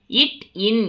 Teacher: இரண்டும் நாவின் நுனி அன்னத்தின் நுனியை பொருந்துவதால் பிறக்கிறது